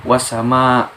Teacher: Atau di contoh lain tuh seperti wasama. Nah, itu sehabis huruf waw, alif lamnya itu tidak usah dibaca, namun langsung dileburkan ke huruf sinnya. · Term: alif lam syamsiah